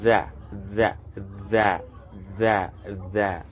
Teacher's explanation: feel some vibration while pronouncing it that is the same thing we place the tip of our tongue in between our upper and lower incisors but there is a little vibration in pronouncing it